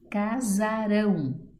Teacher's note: Casarão, sílaba tônica, rão, oxítona.